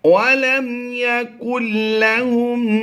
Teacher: نون کو سائلنٹ کریں گے، یعنی یہاں پر ہم نے نون کی آواز کو لام میں مدغم کر دینا ہے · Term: ادغام بلا غنہ